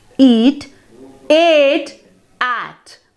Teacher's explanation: So there is a continuous increase in mouth openness as you go from one vowel to another.